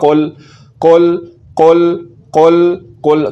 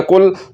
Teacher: ایک تو میں زبان کی جڑ کو تالو کی طرف بلند کر رہا ہوں اور دوسرے نمبر پر زبان کی جڑ کو تالو کے نرم حصے کے ساتھ لگا رہا ہوں